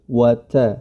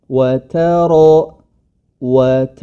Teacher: ta tetap Ta diistifalkan atau tidak ditebalkan ya tipis saja wat kemudian ketika masuk ro baru rnya yang tebal wat wat